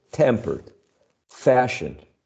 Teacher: it's this second element of this compound the one stressed